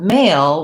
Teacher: the word male we also have the final l sound and this l in male at the end of the word is a dark l